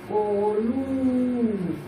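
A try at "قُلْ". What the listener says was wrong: একটু লম্বা করতে হবে।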